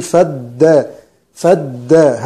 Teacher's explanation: همزة وصل تسقط وصلا، فنخرج من الفاء على الدال مباشرة، نقول فدا فدا، همزة الوصل هذه أكنها غير موجودة.